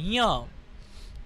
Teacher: नाकामध्ये ञ बोला य य ला नाकात बोला ञ